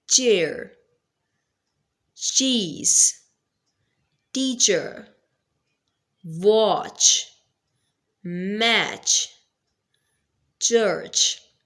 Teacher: We are seeing clearly that we are first blocking the ear and then we are producing it with a friction. It is a voiceless sound. Why? Because there is no vibration of the vocal cords.